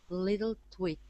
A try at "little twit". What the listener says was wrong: Good. One more time.